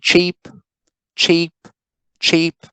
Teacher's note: the length of e is shortened right why because of the presence of the fortis consonants